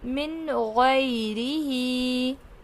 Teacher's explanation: اس کے بعد حرف حلقی میں سے غین آ رہا ہے تو ہم یہاں پر نون کی آواز کو ظاہر کریں گے۔ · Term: نون ساکن